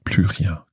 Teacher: our S in the plus is silent here because of no more.